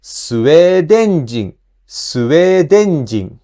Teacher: you cannot place the accent on n, so the accent shift to the previous sound で. So it becomes スウェーデン人, スウェーデン人.